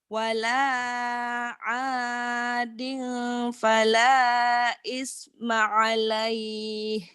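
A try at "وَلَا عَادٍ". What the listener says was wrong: Wala ading, jangan ading ya. Kalau ketemu fa ada M-nya. Bibinya dimingkemin. Wala adin. Bindeng iya karena ifa ya.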